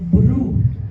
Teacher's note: A sílaba bru tem um encontro consonantal BR, que é áspero, agressivo ao ouvido, devido às suas características fonéticas. E tem a vogal U, que é fechada, escura, fúnebre, sinistra.